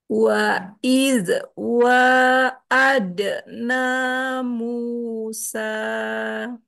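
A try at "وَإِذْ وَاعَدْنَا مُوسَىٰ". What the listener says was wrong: Wa'id jangan mantul. Wa'id. Keluarnya dari ujung lidah ke ujung gigi. Wa'id wa'adna Musa.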